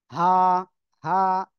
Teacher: গলার শুরু থেকে এই অক্ষরটা উচ্চারিত হয়